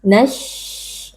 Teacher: Huruf shin yang sukun harus dibaca dengan adanya sedikit aliran suara karena huruf shin bersifat rakhawah.